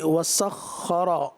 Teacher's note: خا صفت استعلا، اس کو پر بھی پڑھنا ہے، تشدید بھی ہے